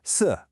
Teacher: It's the fourth tone. That's a sharp falling sound.